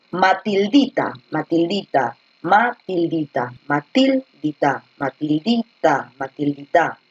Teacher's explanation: La fuerza de voz está en la di